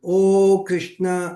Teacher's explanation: ప్లుతము అంటే 3 మాత్రల కాలంలో పలికేటువంటి ఇది అనమాట